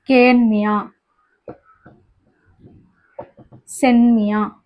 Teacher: இது வந்து இந்த கேன்மியா அப்படிங்கிறது குற்றிய லிகரமா இருக்குது. தனக்குரிய மாத்திரையிலிருந்து இது வந்து குறைஞ்சு ஒழிஞ்சிருக்கு. அதாவது ஒரு மாத்திரை ஒலிக்கக்கூடிய இடத்துல இங்க வந்து அரை மாத்திரையா இருக்குது.